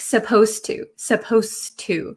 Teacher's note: and the T sound become kind of like one sound so when I speak supposed to supposed to it doesn't sound like there's a d